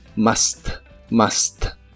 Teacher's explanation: la u se pronuncia como una a normal de español